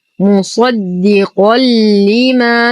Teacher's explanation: وهو الحق، ننتقل من فتحة الواو إلى إسكان اللام القمرية. مصدقا لما، تنوين بعده حرف اللام، الحكم إدغام كامل بلا غنة